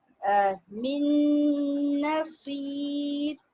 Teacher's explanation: नून पे मुशद्दद आ जाता है, शद आ जाता है और एक अलिफ के बराबर हम गुन्ना करते हैं